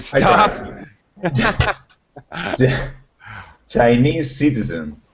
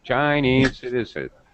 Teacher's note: Your pitch went up on the first part.